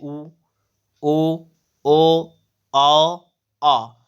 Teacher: जिन स्वरों के उच्चारण में होंठ व्रतमुखी या गोलाकार होते हैं